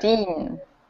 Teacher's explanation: stress the second half of the word and pronounce it very cleanly and with a slight rise in pitch so that we can all tell the difference between 15 and 50.